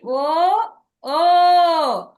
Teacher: ఇంకా కంఠం నుంచి పలుకుతున్నాము ఓష్టము రెండు పెదాలు కూడా కలుస్తున్నాయి కొంచెం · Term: కంఠ ఓస్టవ్యః